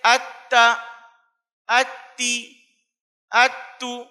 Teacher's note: تا دال تو، تینوں کا مخرج ایک ہی ہے، زبان کی نوک اوپر کے دو بڑے دانتوں کی جڑ